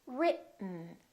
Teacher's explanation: Just move your tongue forward to go directly to the N. This E kind of disappears. It's not pronounced. So it's basically the T and the N that are next to each other.